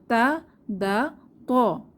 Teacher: এই তিনটি হরফ জিহবার আগা উপরের দাঁতের গোড়ার সাথে লাগিয়ে উচ্চারিত হয়